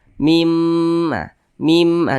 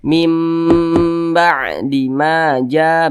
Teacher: terjadilah hukum bacaan ilab maka dibaca mim begitu kemudian didengungkan Nah didengungkan itu suaranya itu kita tahan kita panjangkan sejenak nah kadar panjangnya itu dua harakat